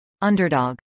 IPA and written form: ˈʌndɚdɑːɡ (underdog)